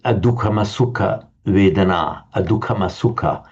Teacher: in order to avoid the hiatus of those two vowels, and M is inserted. That's contrary to the rules of Sanskrit phonetics, but Pali will regularly do it. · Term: inserted M